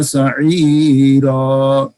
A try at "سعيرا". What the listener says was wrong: یہ سعیرہ کی را پور کیوں ہو گئی ہے؟ پیچھے تو یا ساکن آ گئی ہے.